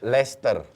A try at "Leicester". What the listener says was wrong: You delete the C in the middle.